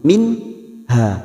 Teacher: huruf ha dibaca jelas tanpa mendengung Min Ha hanya kita panjangkan dua harakat fathah diikuti Alif minha